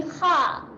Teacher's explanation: Kalau kita nganga dan tak bunyi tebal, dia akan bunyi kha.